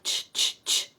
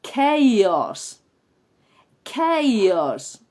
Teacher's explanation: cuando una palabra inglesa viene del griego y se escribe con CH, la pronunciación de esa CH no es la habitual ch, ch, ch, sino que es k, k, k